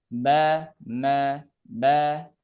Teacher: huruf ba itu lebih lebih rapatannya lebih berat daripada huruf ma. Kalau ma dia hanya nempel saja.